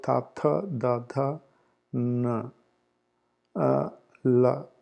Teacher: these are when the tongue touches the teeth. That's why I call dantya, dentals. Like when you say tha, like your tongue touching the teeth.